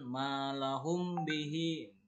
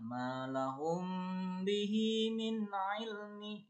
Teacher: Jadi mim sukunya itu dilafalkan samar sehingga seolah-olah menjadi gunah, ditahan 2 harokat.